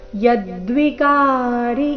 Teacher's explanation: ಯದ್ವಿಕಾರಿ ಈ ಶಬ್ದದಲ್ಲಿ ಕ ಮಾತ್ರ ದೀರ್ಘ ಯ ಮೇಲೆ ಆಘಾತ